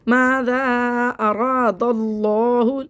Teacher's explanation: لفظ اللہ کے لام سے پہلے زبر ہے، اس کو موٹا پڑھیں گے